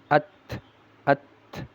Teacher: Ini ta yang sukun ada sifat haesnya ada udara yang keluar